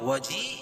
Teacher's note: وجیہا فی الدنیا والآخرہ، وجی یا مدہ، یا ساکن سے پہلے زیر ہے تو یا مدہ اس کو ایک الف کے برابر کھینچ کے پڑھیں گے